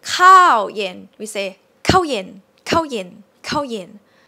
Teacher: This word kǎo is also interesting because we don't really say it long all the time. So when you place it as the first syllable, it will be shortened a little bit. So it might, actually not a little bit, quite a lot.